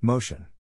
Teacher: in this case the accent is in the first syllable corresponding to Mo